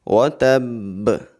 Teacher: با کے اوپر شد آ رہی ہے اس لیے ہم نے سختی کے ساتھ قلقلہ کرنا ہے